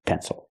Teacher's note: the stress is on the first syllable it is not pronounced ill